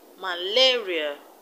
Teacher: Malaria, the stress is on LA.